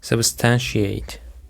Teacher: The stress is on the second syllable, substantiate.